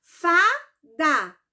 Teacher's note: é dissílaba porque de sílaba porque tem apenas duas sílabas e ela é paroxítona por quê Porque a sílaba tônica dela é a penúltima